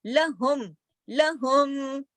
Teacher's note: میم آواز جو ہے ناک میں جا رہی ہے، ذاتی صفت ہے۔ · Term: اظہار شفوی